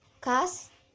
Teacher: X mati, oral, velar, dan frikatif